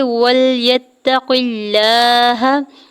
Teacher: قاف کی زیر کو لام جلالہ کے ساتھ ملاتے ہوئے اللہ کے نام کو باریک پڑھیں گے